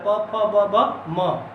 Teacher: प वर्ग को हमारी जो हवाएं हैं वो ओष्ठों से होकर, ओठ से होकर टकरा कर निकलती हैं